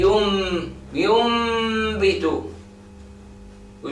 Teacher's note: We change the whole noon to mim. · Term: iqlab